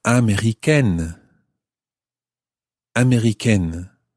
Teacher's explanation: the E on the end of américain takes away the nasal sound of américain and it becomes américaine